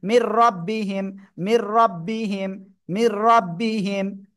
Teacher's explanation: নুন সাকিন বা তানবিনের পরে এই যে র আর এই লাম যদি আসে আমরা কি করব, গুন্না ছাড়া মিলিয়ে পড়বো